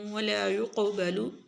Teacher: قاف کو موٹا بھی پڑھیں گے اور قاف کے اوپر قلقلہ بھی کریں گے